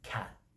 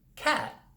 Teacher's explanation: my tongue just stays up it never comes down to let the air out · So in English, we can make certain consonant sounds by producing a puff of air at the end, like cat. That t lets out a puff of air at the end. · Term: aspiration